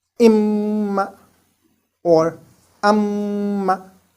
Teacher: the ghunnah in meem mushaddad is done with closed lips. Naturally, because meem is articulated with the joining of our two lips.